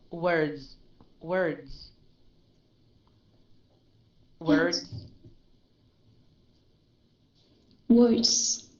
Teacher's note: it's a z sound and it's very light